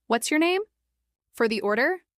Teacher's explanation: Uses question intonation with rising tone on order.